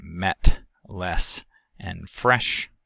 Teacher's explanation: lower front vowel is the e vowel referred to as epsilon it is the lower of the mid front vowels it is lacks and unrounded found in words like met less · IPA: /ɛ/